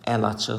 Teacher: Burada deməli göründüyü kimi i və a hər birləşməsi var və əli sözündəki i saiti tələffüzdə düşüb əl açıq şəklində tələffüz olunubdur